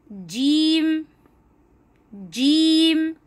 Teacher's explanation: बीच जबान और बीच तारक से ये हर्फ अदा होगा